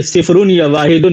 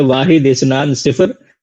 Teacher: का सही तरीका जो है वो है वाहिद, इस्नान, सिफर, यानी लास्ट वाला इराब जाहिर नहीं करते हैं बोलने में भी